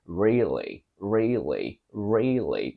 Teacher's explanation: say really with a clear L it's very typically British but if you want to go American you simply go really really really with the dark L